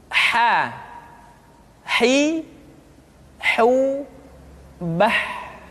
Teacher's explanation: Huruf ha dikeluarkan dari tengah-tengah tenggorokan.